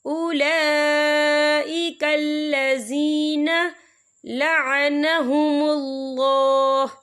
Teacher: یہ مد جو ہے مد متصل ہے، اس کی مقدار 4 حرکت کے برابر ہے، تو ہم اسے 4 حرکت کے برابر کھینچ کے پڑھیں گے۔